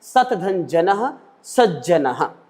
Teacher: त को ज हो गया है, तो ता वर्ग को चा वर्ग में परिवर्तित हुआ है, वो श्चुत्व संधि है।